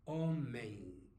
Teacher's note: when it ends the M, it sounds more like N or ing, homem, yeah?